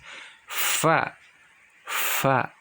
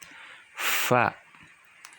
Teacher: Asyafatain dibagi menjadi dua jenis, yaitu huruf fa, fa. Keluarnya berasal dari bibir bawah yang bersinggungan dengan ujung gigi seri atas.